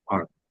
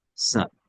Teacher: আমেরিকানরা কিভাবে বলে আর, একটু র টা একটু তারা উচ্চারণ করে, আর। আর ব্রিটিশরা আ, যেমন স্যার বলে না, সা, আর এর উচ্চারণ করে সা